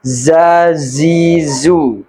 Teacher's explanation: Kalau jim tidak ada desis. Tapi kalau huruf zai itu desisnya besar.